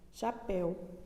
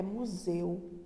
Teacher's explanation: em chapéu, eu abro a boca para falar chapéu. Já em museu, a minha boca não se abre tanto quanto ela se abre para eu falar chapéu. Então, em chapéu o ditongo é aberto e em museu o ditongo é fechado, tá bom? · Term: ditongo aberto